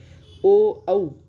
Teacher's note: इनका उच्चारण करते समय कंठ और ओठ दोनों का प्रयोग हो रहा है